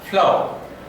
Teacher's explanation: those sounds made by articulation of the upper teeth towards the lower lip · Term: labiodentals